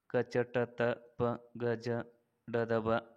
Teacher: ಪ್ರಾಣ ಎಂದರೆ ಉಸಿರು ಎಂದರ್ಥ ಅಲ್ಪ ಎಂದರೆ ಕಡಿಮೆ ಪ್ರಾಣ ಎಂದರೆ ಉಸಿರು ಎಂದರ್ಥ ಕಡಿಮೆ ಉಸಿರಿನಿಂದ ಉಚ್ಚರಿಸಲ್ಪಡುವ ಅಕ್ಷರಗಳಿಗೆ ಅಲ್ಪಪ್ರಾಣ ಎನ್ನುತ್ತಾರೆ